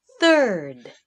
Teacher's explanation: the tongue comes up between the teeth